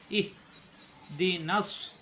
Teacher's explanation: ইহদিনাস সিরাতাল মুস্তাকিম এই আয়াতটার ভিতরে আমরা বেশি ভুল করি ইহ হা কণ্ঠনালীর শুরু থেকে কোন চাপ নাই ইহ দি নাস এই নাম মিলবে সদের সাথে সিন হবে না